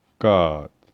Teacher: the roots of your tongue is blocking the throat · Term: molar sounds